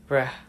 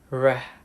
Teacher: This sound is known as the voice alveolar trill or the voice alveolar approximant, depending on the specific dialect. This sound is produced by vibrating the tip or the back of the tongue against the alveolar ridge, so it is never actually making contact with any part of the roof of the mouth.